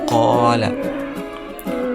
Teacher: huruf qof keluar [musik] dari pangkal lidah